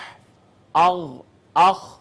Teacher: اس کے بعد اقصی حلق سے حمزہ ہا، وسط حلق سے عین ہا، اور حلق کا وہ حصہ جو منہ کے ساتھ جڑا ہے، یہاں سے ادا ہوں گے غین اور خا